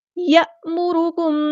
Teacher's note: الف پر جزم آ گئی تو یہ حمزہ بن گیا، جھٹکے سے ادا کرنا